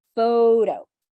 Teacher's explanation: we stress the first part